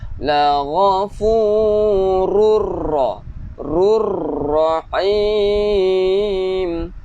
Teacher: Rurra tak perlu dengung, walaupun tanwin di situ. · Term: idgham bila gunnah